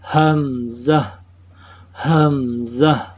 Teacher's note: حمزہ کے پڑھانے میں اس کے شروع میں بھی ہا ہے اور آخر میں بھی ہا ہے، تو اس طرح دونوں ہا کو ظاہر کرنا ضروری ہے